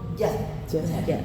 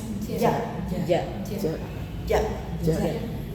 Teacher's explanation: Timbulnya dari tengah lidah naik ke langit-langit yang dihasilkan jelas.